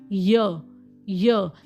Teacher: करेगी तो वह बनेगा पैलेट साउंड्स फॉर एग्जांपल य य देखो जो जीभ का बीच का पोर्शन है यय वो थोड़ा सा ऊपर जा रहा है ब्लेडसो थोड़ा ऊपर जा रहे हैं तो ये बन गया आपका